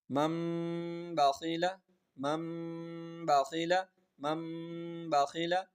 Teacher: اس کے بعد با ہے تو اس لیے اس کو نون ساکن اور نون تنوین کو میم سے بدل کر غنہ کر کے پڑھتے ہیں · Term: اقلاب